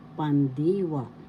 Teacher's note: The second syllable has the accent, so you pronounce it pandiwa.